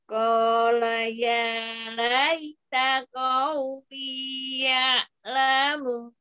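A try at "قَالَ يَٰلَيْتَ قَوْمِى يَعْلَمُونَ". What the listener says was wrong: Yang di laita kolaya laknya jangan dipanjangkan om. ya ya laita lai terlalu panjang ya lain terlalu panjang laita jangan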